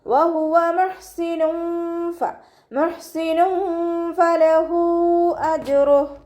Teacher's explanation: തെൻവീനിന് ശേഷം ഇഖ്ഫാഇൻ്റെ ലെറ്ററായിട്ടുള്ള ഫ വന്നിട്ടുണ്ട്. തെൻവീനിലുള്ള നൂനിൻ്റെ സൗണ്ടിനെ മറച്ചു വെച്ചിട്ട് മണിച്ചോതി കൊടുക്കുക